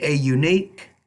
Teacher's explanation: it I'm gonna put makes it not an but a because the first sound of unique is a consonant it's a Y not a vowel